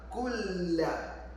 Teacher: Nun merges with lam.